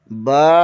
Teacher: بند ہونٹوں کے گیلے حصے سے ادا ہوتا ہے